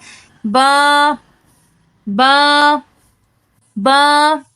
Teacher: ऊपर वाले होंठ का गीला हिस्सा नीचे वाले होंठ के गीले वाले हिस्से से मिल रहा है · جب دونوں ہونٹوں کا گیلے والا حصہ آپس میں ملے تو حرف با ادا ہوتا ہے۔ گیلے والے حصے سے مراد ہونٹوں کے اندر والا حصہ مراد ہے۔